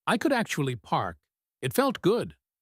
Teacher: drops his intonation on felt good. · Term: the yield